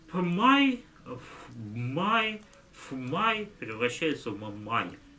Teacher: Когда к взрывным согласным добавляется звук «м», то под его влиянием, видите, губные сами переходят в «м», то есть «пбф» превращается в «м». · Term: ассимиляция